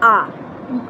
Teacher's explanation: আর বিবৃত কেন্দ্রীয় স্বরধ্বনি, আর নিম্ন হলো আ